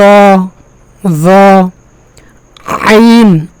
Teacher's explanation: আইন একটা কঠিন গলার ভিতর থেকে উচ্চারণ হয়।